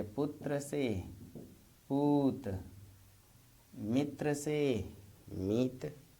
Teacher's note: त्र ध्वनि त में बदल गई